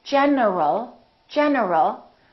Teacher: my tongue is moving for the N and it's moving for the L so when I say in general my tongue moved three times